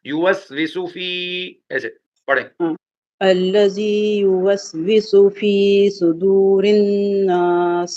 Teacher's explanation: اب سو کو نہیں کھینچنا لیکن فی کو کھینچنا ہے